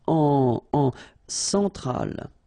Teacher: Centrale, remember, E-N, nasal, so it goes in your nose.